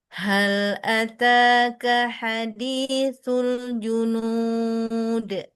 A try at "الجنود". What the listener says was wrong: Sama jangan ke hidung. Hal ataka hadithul junud. Al junud. Yang ke hidung hanya domahnya saja. Al junu junu junu. Kalau sudah waw jangan masih di hidung. Al junud. Angkat tengah lidah ju, nggak ada percikan angin. Buka tutup al junud.